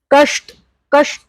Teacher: श इज रेट्रोफ्लेक्स, श। ठीक है, कष्ट, कष्ट इज रेट्रोफ्लेक्स